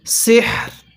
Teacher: যেমনটা এখানে সিহর, রটা হালকা উচ্চারণ হবে, হাটা পরিপূর্ণ উচ্চারণ হবে